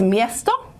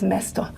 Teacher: it just so happens that croatian has more palatalization than serbian